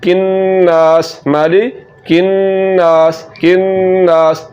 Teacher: पहले नून पर गुन्ना होगा, फिर नून को हमने लंबा करना है। तो कैसे पढ़ेंगे, किन्नास माली किन्नास किन्नास, पहले गुन्ना हुआ, फिर ज़बर के बाद अलिफ के आ जाने की वजह से हमने इसको लंबा किया।